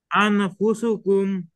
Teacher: নুন সাকিনের পরে ইকফার অক্ষর ফা, নাকের ভিতরে নিয়ে গোপন করিয়া গুন্না করতে হবা